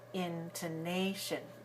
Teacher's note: Intonation is stressed on the third syllable.